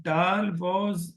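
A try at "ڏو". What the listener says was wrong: This is not dal. This is not at all dal. This is dal.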